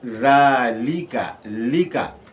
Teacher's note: कसरा जो है उसमें इन्ख़िफ़ाज़ फ़म और सौत, यानी मुंह और आवाज़ को नीचे करना पड़ता है, तो फिर ये ज़ेर जो है कसरा सही अदा होगा।